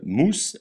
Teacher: S se prononce se comme dans serpent, jamais ze comme dans oiseau.